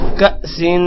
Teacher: کاف کے بعد حمزہ ہے، تھوڑا سا جھٹکا دیں گے. کأسن، سن پر غنہ ہوگا.